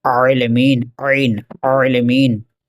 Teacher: عین کو بھی بیچ حلق سے دبا کر پڑھیں گے